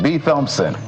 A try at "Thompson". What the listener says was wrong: Thompson. It's like the H is silent. Thompson.